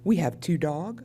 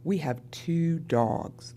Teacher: the ending sound that would Mark plural is zeroed out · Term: zero plural